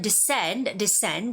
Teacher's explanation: descend has the second syllable stress